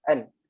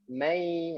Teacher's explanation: Kalau kita sebut nun, kan nun tu akan bertemu dengan langit atas. An. Ataupun hujung tu, hujung dekat gigi tu.